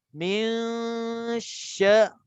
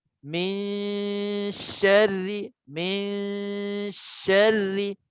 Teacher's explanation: Dia kena sambil dengung 2 harakat, shin tu dah ada dah sebutnya. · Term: ikhfa